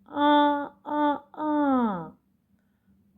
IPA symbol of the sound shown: а